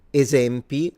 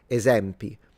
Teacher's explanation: I would open the e.